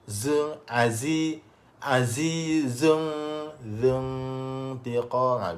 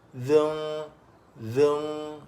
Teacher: Hujung lidah tekan belakang, gigi kecil bawah. Kalau zal, hujung lidah dikeluarkan sedikit. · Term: zai